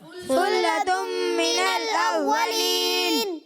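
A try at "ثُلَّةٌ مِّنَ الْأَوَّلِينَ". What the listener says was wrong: ثلۃ من الاولین. اچھا پیارے بچوں سا میں سیٹی کی آواز نہیں آئے گی. ٹھیک ہے، ثلۃ نہیں، ثلۃ. اور یہاں ادغام ہو رہا ہے تو یہاں غنہ بھی کرنا ہے. ٹھیک ہے، ثلۃ من الاولین.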